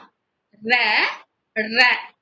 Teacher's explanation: ர மேல் அன்னத்தில் முதல் பகுதியை தொட்டு வருவதால் ரகரம் தோன்றுகிறது நம்ம மேல் அன்னத்தின் மேல் அன்னத்தின் முதல் பகுதியை இங்க உடல் பகுதியை தொட்டு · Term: இடையின ரகரம்